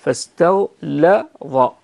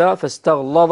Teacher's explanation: فاستغلظ وليس فاستغلظ بتغليظ اللام